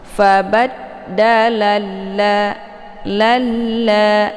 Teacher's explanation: Nah, di sini sudah jelas bahwa huruf alif lam asy-syamsiyahnya adalah la bukan dha ya. Jadi cara bacanya la-nya dileburkan ke dalam la ya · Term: idgham syamsiyah